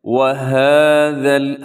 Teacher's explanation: ہاں کے اوپر کھڑا زبر ہے تو اس کو آپ نے لمبا کرنا ہے